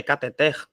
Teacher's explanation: a sílaba tônica é a última então a palavra cateter não é cateter tá é cateter então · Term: oxítona